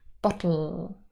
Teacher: So here, for example, underneath the L sound, the L phoneme, we've got this little line, and that means that the L is a syllabic consonant. It forms a syllable on its own. For example, in the word bottle.